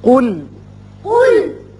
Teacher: قل قل قوف پر پڑھیں گے، لام باریک